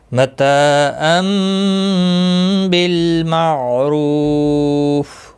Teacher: رو واو مدہ ہے، رو پیش کی وجہ سے پر پڑھا جائے گا